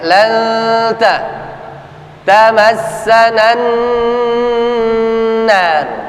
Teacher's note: nun mati bertemu dengan huruf ta. Prosesnya tunggu, jangan buru-buru, jangan cepat-cepat, jangan tergesa-gesa. 2 sampai 3 ketukan paling tidak.